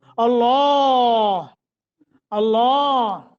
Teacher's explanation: لفظ اللہ منہ بھر کے پڑھیں گے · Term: تفخیم